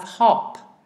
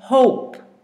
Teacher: we have hop where the O is a short vowel when we put an e at the end it lengthens the first vowel